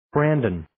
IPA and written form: 'brændʌn (Brandon)